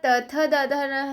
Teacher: त हम दांतों से बोलते हैं, उसे दंत वर्ण कहते हैं